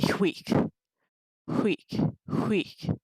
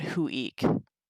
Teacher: Sometimes that UI can be a separate sound. But in the dative, it's really huic, huic, huic. Just one syllable